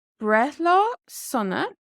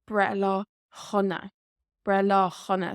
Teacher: Usually when you see it written, it is written without the H. However, when we speak it, especially in some dialects, they will put in a H sound. So Brethla Hunna.